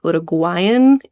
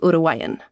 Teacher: you don't really pronounce the g in the middle so much. It's not like uruguan it's like urugan.